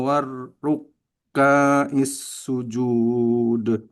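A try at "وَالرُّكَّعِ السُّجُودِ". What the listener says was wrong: Warruka'is sujud. Ka-nya tidak panjang. Warruka'is sujud.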